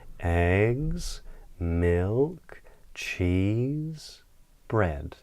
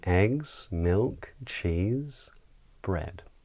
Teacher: we would use a downward inflection brand to say that we finished the list but on the items before that we would use a rising inflection